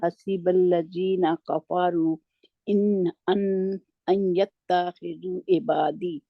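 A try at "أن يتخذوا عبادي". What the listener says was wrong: ता को खींचना नहीं है बीच में से.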